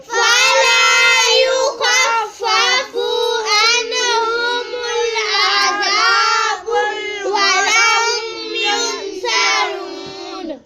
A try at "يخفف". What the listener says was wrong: یخفف، فا جو ہے نا فو کو لمبا نہیں کرنا، یخفف پڑھنا، یخفف نہیں کہنا، یخفف.